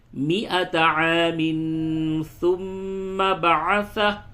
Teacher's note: ثم میم پہ تشدید ہے، غنہ کریں